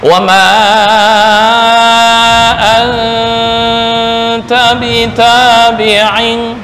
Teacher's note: nun mati bertemu ta itu ikhfa ya. Ikhfa remang-remang bukan dibaca izhar.